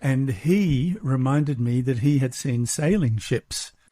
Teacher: Do you notice how he really stressed the he in this part?